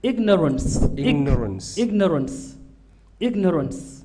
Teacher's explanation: in english you separate the g and the n